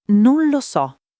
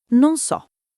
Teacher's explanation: non lo so, diventa non so tutto attaccato con la L quasi scomparsa. >> Non è sbagliato, è semplicemente il ritmo naturale del parlato. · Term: le parole mangiate